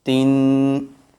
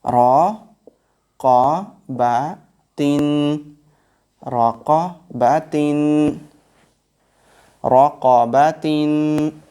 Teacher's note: Tin each time, like run, each time there will be n sound. Little bit more gunna there. It's called nasal sound.